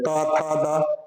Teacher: त त बर्ग ये त थ द त बोल रहे तो जीभ कहां आ रहा आपके दांतों पे आ रहा है इसलिए इसको क्या बोलते हैं हम लोग दंत बोलते हैं अब